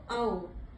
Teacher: और आओ जो है आ और ऊ मिलकर के बनता है। इसमें पहले आ का स्वर बोलते हैं, फिर ऊ का बाहर निकलता है स्वर, तो आओ। तो ये आप उच्चारण की दृष्टि से अगर आप इसके ऊपर ध्यान देंगे तो आपका सही उच्चारण होगा।